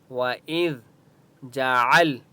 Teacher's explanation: عین کی آواز حلق سے نکالیں گے،